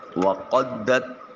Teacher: قاف کو پھر موٹا کر کے ادا کیا جائے گا، دال کو تا کے ساتھ ملاتے ہوئے بریک آواز نکالیں گے۔